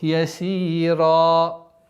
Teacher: Здесь аннулируется танвин, остается удлинение в размере двух огласовок.